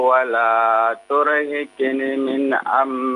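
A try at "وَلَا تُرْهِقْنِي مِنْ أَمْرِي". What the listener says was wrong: Turhiqni. 2 harakat lagi. Nun ada ya-nya di situ ya.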